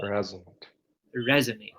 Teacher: So the stress should be on the first syllable where we say resonate